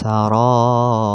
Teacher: ro dibaca tipis apabila ro diwaqafkan dan didahului harokat kasrah. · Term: tarqiq atau tipis